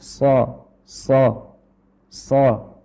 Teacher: Tengah lidah membentuk cekungan dikarenakan pangkal lidah naik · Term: sifat tebal